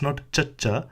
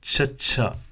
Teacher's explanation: remember just remember that it's the previous concern but aspirated so you can imagine it to be like a CH with an extra H sound to show the extra airflow whilst reciting this letter